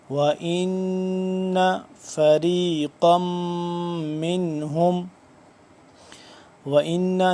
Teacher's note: نون مشدد ہے، اس پہ غنہ کریں گے. فریقم، قاف دو میم زبر قم، قاف کو ایک تو موٹا کر کے پڑھیں گے، تنوین ہے، اس کے بعد اس پہ غنہ بھی کریں گے، میم مشدد ہے.